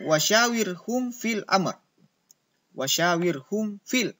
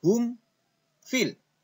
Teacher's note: mim sukun nya jelas itu makanya disebut izhar syafawi